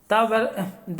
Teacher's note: दा का उच्चारण स्थान दंत